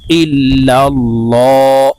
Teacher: আল্লাহ শব্দের আগের হরফে জবর আছে তাই এই লামকে ল বলে বলে অর্থাৎ মোটা করে পড়বো